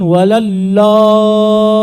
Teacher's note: يبدلون الضاد إلى لام